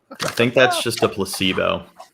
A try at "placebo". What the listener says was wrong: There ain't no T in placebo. Placebo is what you said. You're saying it now, but the first time you said placebo.